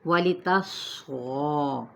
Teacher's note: صاد پر ہے، غین بھی پر ہے اور اس کو 4 حرکت کھینچیں گے